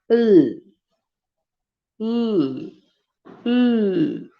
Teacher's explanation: lateral sound, in which the air escapes through the sides of the mouth. L, l, l. The sound is produced from the sides of the blade of the tongue.